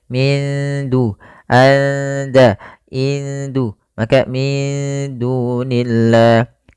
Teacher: Kemudian pada lafal da di sini nunnya disamarkan ke da kita namakan dengan bacaan ikhfa